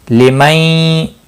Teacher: نون ساکن کے بعد حرف یرملون کا یا ہے، ادغام باغنہ ہوگا۔ قاف مستعلیہ ہے، پر پڑھا جائے گا، ساکن بھی ہے، اس پر قلقلہ بھی ہوگا، باقی کسی بھی حرکت والے حرف کو کھینچنا نہیں۔